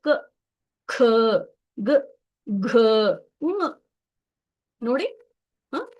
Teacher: ನಮ್ಮ ಬಾಯಿಯಲ್ಲಿ ಒಳಗಡೆ ಇರುವಂತ ನಾಲಿಗೆ ಎಲ್ಲಿನೂ ತಾಗ್ತಾ ಇಲ್ಲ ಹಲ್ಲುಗಡೆನು ಕೂಡ ತಾಗ್ತಾ ಇಲ್ಲ ಕೇವಲ ಕಂಠದಿಂದ ಬರ್ತಾ ಇದೆ ಕ ಖ ಗ ಘ ಹಾಗಾಗಿ ಇದಕ್ಕೆ ಕ ವರ್ಗ ಕಂಠದಿಂದ ಉತ್ಪನ್ನ ಆಗುವಂತಹ